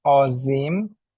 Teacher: Make the on sound smoother and more nasal.